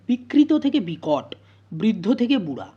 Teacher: তারপরে কি হলো না, বিকটের কি হলো না, শেষে যে ত ধ্বনিটা ছিল সেই ত ধ্বনিটা কী হয়ে গেল, টতে পরিণত হয়ে গেল, আর রটা রিয়ের যে রটা সেটা লোপ পেয়ে গেছে, অর্থাৎ এখানে দন্তধ্বনি মূর্ধন্য ধ্বনিতে পরিণত হয়েছে। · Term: মূর্ধন্য ভবন